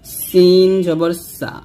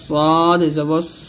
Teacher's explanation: সিন হলো পাতলা হরফ অবশ্যই পাতলা করতে হবে আর সদ হচ্ছে মোটা হরফ এটা কিন্তু মোটা করে উচ্চারণ করতে হবে